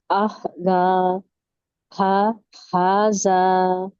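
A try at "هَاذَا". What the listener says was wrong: जा में buzzing sound ज नहीं है, ये जा, बजिंग साउंड नहीं आनी चाहिए। जबान की टिप आगे के दो दांतों के टिप से टच करके नरमी से अदा करें।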